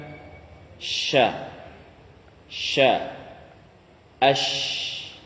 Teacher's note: tersebarnya udara pada seluruh mulut ketika mengucapkan huruf tersebut